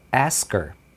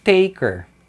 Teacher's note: você não ouve o H, você só ouve o er.